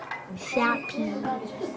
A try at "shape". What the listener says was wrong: No, you don't say the E. You say the A. Shape. You don't pronounce the E at the end.